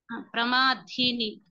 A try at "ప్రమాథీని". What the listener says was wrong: కాదు. సెకండ్ దా కాదు, ఇది సెకండ్ థా.